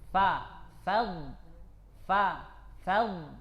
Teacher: ikut tafkim jangan sampai Fa itu ikut tebal punya dad minli Fa tetap dia fathah dan tetap dia tipis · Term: tipisnya Fa